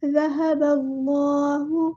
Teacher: کریں گے، با کو ہم لام کے ساتھ ملا دیں گے، اللہ کا لام جو ہے یہاں پہ پور یعنی ہیوی لیٹر پڑا جائے گا، موٹا پڑا جائے گا ، با اور حمزۃ الوصل ہمارا ڈراپ ہو جائے گا، ذہب